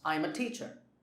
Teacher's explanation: the focus is on teacher because that is the main information in the sentence.